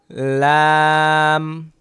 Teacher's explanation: জিহবার আগার কিনারা উপরের দাঁতের মাড়ির সাথে লাগিয়ে